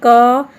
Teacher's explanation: बोलते समय आपके मुंह से क के बाद अ की ध्वनि निकल रही है